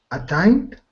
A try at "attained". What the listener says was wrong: Attained. Attain. Make sure you get that D sound at the end too, but that sounds great.